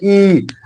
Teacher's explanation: ई का उच्चारण स्थान जो है वो तालू होगा